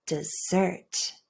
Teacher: But the word dessert, can you hear dessert? That first syllable does reduce to schwa.